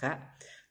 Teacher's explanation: ka itu cara membacanya yaitu berada di atas tenggorokan atau angin itu berhembusnya ke langit-langit.